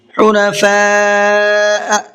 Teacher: حنفاء یہاں بھی بڑا مد ہے، اس کو بھی زیادہ ہی کھینچنا ہے 4 سے 5 الف کی برابر